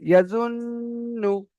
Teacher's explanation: এখানে নুনটাকে কি করতে হবে? গুণনা করে পড়তে হবে, কারণ কি? নুনটার উপরে তাসদিদ এসেছে, ইয়াজুন্নু।